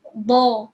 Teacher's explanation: When you say door, you will curl your tongue, right? But this one, dha, is you don't curl your tongue. The tongue is still some straight lah, and it's at the back of the teeth. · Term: huruf dha